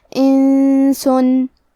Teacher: نون ساکن ہے پھر حرف السین ہے. سین حروف الاخفاء میں سے ہے تو ہم یہ حکم کو غنہ کے ساتھ ادا کریں گے.